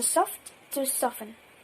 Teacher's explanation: So from soft to soften, the t is lost.